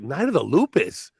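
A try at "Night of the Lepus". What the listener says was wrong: Maybe because you're not pronouncing it right, because you keep saying lupus like it's some kind of hoof and mouth cough disease. It's not the lepus. It's the technical term for rabbit, a lepus.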